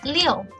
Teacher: Liu is the fourth falling tone. So you can see the tone mark is on the U, not I.